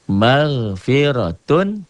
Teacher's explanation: Hukumnya nih ini izhar. Dibacanya jelas tanpa ditahan, tanpa ditekan, tanpa dengung.